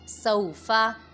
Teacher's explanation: واولین کو بھی بغیر کھینچے بغیر جھٹکا دیے نرمی سے معروف پڑھیں گے